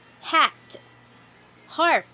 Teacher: primary constriction is at the glottis